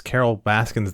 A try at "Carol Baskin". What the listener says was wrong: I'm pretty sure it's Carol Baskin. It's not Baskins.